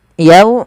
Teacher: Yau di sini ada fathah bertemu waw, bacaan lin harus lembut